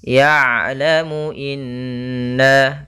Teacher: kita tahan dulu innanya in kemudian baru na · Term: bacaan gunah